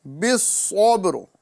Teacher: صاد چونکہ یہ حروف مستعلیہ میں سے ہے، اسے پر کر کے پڑھنا ہے۔ بالصبر، ساتھ ہی ساتھ یہاں پر را کو پر کرنا ہے۔